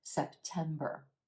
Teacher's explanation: It's that contrast between what we're emphasizing in the second syllable and the quicker first and third syllables that makes this word sound more natural.